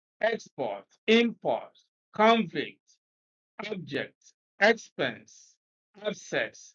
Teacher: These are all prefixes, but because they are nouns, the first syllable is stressed.